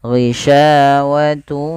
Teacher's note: masih menyisakan sedikit sisa daripada bunyi nunnya. Ghishawatu ya, langsung ke waw dan ditahan sepanjang 2 harakat. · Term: idgham bi gunnah